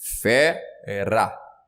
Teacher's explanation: mais forte é o fe por isso eu falo que é sílaba tónica